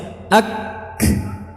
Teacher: kita merapatkan makhrajnya dulu, baru setelah suara keluar, saat itulah keluar sifat hamas